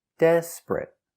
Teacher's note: 2 syllables. The stress is on the first syllable. Desperate. Not 3 syllables, desperate, but 2 syllables.